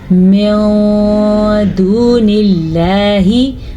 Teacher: इख़्फ़ा का मतलब होता है छुपाना, तो नून की आवाज़ को हम गुन्ने के साथ छुपाएंगे